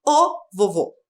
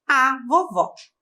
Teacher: vovó tem acento agudo né então o som do o é aberto fica ó e é o feminino da palavra a vovó tá